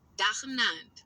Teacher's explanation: with the emphasis on the first syllable